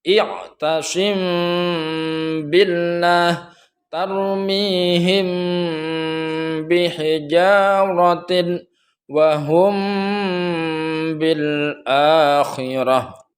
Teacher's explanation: Kalau iklab tadi itu bibir agak ada dibuka sedikit, sedangkan ikhfa syafawi di sini tidak dibuka sama sekali, namun disertai dengan suara samar.